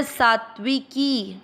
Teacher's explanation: सा के साथ आधा त पढ़ना है पहले सात और फिर आधे त को पूरे व के साथ पढ़ना है त्व व पर ई की मात्रा त्वी तो सा के साथ